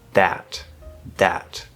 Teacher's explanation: that's the dental d to replace the voiced th because d is voiced or dental d is voiced